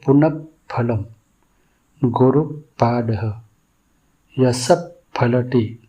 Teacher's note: यहां विसर्ग होठों से प जैसा फूंककर उच्चारित होता है। उच्चारण करते समय होठों से हल्का वायु स्पर्श अनुभव होता है। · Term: उपध्मानीय